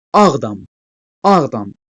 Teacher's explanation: vurğusu ilk komponentin yəni birinci sözün üzərinə düşməlidir